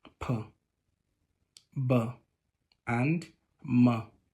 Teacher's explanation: They are bilabial. In the course of production, both lips are involved, as in P, B, and M.